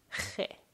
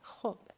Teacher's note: If you remember, this sound was che, which sometimes is written as kh or x in English. So che is produced as a glottal sound. It's as if you want to try to produce a sound from the bottom of your throat.